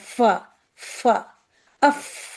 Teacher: تو نیچے والے ہونٹ کا یہ جو پرپل سا دکھ رہا ہے، نیچے والے ہونٹ کا تر حصہ جب اوپر کے سامنے کے دو دانت، اب یہ دو دانت، یہ ہونٹ جو ہے یہاں ان دو دانتوں سے مل رہا ہے، ٹھیک ہے؟ اوپر کے سامنے کے دو دانتوں کے کنارے سے لگے تب فا ادا ہوتا ہے